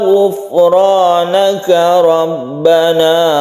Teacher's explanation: Kemudian hati-hati di ghufranaka. Ghufranaka fa-nya bukan qalqalah, jadi jangan dipantulkan